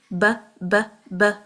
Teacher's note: جو با ہے، فار ایگزامپل آپ کہیں ب ب ب، ہمارے ہونٹوں سے ریلیز ہو رہا ہے، با کا مخرج ہمارے ہونٹ ہے، شفتین ہے۔ جیسے ہی آپ نے ب کو چھوڑا، اب آپ نے اس کو لمبا کیا نا الف کے ساتھ، وہ ساری جو سٹریچ ہے، سارا سٹریچ ہے، وہ ہمارے الجوف سے ہوگا۔